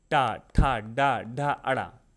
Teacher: आप जब भी टा, ठा, डा, ढा बोलेंगे तो आपको जीभ मोड़ के बोलना होगा ना, आप ऑटोमेटिक जीभ मोड़ के बोलते हैं, जीभ को फोल्ड कर लेते हैं। · अब बात करते हैं मूर्धन्य, टा वर्ग। मूर्धन्य मतलब होता है जब आपकी जीभ थोड़ी सी फोल्ड हो जाए, मतलब थोड़ा सा मुड़ जाए अपने स्थान पे।